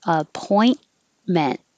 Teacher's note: Don't pronounce the T's in the middle or at the end. Just hold it in the T position.